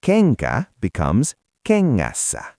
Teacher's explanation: When it gets crowded, NK turns into a ringing NG sound.